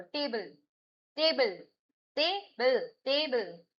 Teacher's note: टेबल में ट आप ध्यान से बोल रहे हो, बल आप जल्दी बोल रहे हो, टेबल, टेबल, टेबल, टेबल, पे प्राइमरी स्ट्रेस है। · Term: primary stress